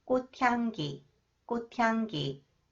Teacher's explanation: The sound of the final consonant 치읒 is changed to 디귿, 꽃, and then combined with 히읗, it is pronounced 트 sound